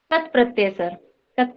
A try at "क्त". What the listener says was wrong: वो कत नहीं होना है मैडम, उनको त बोलिए, त। कत्र बोलने से क पूरा होता है, त हलंत हो जाता है।